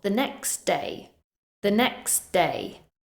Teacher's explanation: As you can see, the word next has a t sound at the end. However, when we follow it with a word that begins with a consonant, day, we drop the t sound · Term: elision